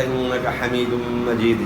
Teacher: نون مشدد میں غنہ ہوگا